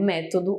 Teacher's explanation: Eu tenho método, onde a antepenúltima sílaba é acentuada.